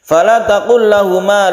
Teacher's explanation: lam bertemu lam disebut idgham mislain atau mutamasilain karena hurufnya sama, lam dan lam, sehingga ditasydid lam. Ditasydid lam itu hampir sama dengan sukun ya.